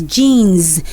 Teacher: The S there is pronounced as Z and not S. That's why I pronounce as jeans.